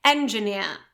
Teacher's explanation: And the British variety without this R being pronounced, so that would be engineer, engineer, okay? Stress on the last syllable